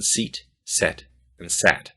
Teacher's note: You'll notice your tongue starts up high, e, goes to the middle of your mouth, and then goes down to a.